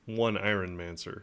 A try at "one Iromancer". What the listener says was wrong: Oh, there's no N, so it's one Iromancer.